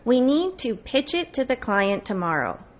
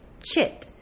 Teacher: you're not going to finish that air at the end of pitch. You're going to connect the ch to the I, chit. So we need to pitch it to the client tomorrow. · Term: linking